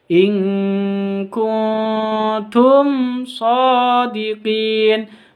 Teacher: mim sukun bertemu dengan Shad jelas bacanya karena izhar syafawi